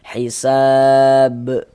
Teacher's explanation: Karena kalau kita membaca Al-Quran ya, kemudian kita itu berwakaf, berhenti kita tepat di huruf qalqalah, maka menjadi qalqalah kubra.